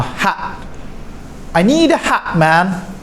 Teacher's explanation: in British English they say glottal stop